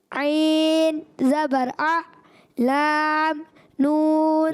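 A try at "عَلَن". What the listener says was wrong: لام، لام میں عین کی آواز کیوں آئی ؟ عین کی آواز لام میں نہیں آئی. لام لام عین ایسے نہیں، لام ایسے کلیئر رکھنا ہے.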